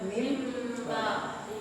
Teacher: Menukarkan bunyi n ke m, ditukarkan nun matinya ke huruf mim mati. Jadi bacanya asalnya min ba'di jadi mim ba'di. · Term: iklab